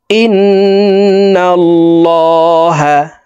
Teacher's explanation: নুনে মিমে তাসদিদ হইলে সর্ব অবস্থায় নাকের বাসি থেকে গুন্নাহ করিয়া পড়িতে হয়। 3 সেকেন্ড পরিমাণ গুন্নাহ করে পড়ব। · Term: ওয়াজিব গুন্না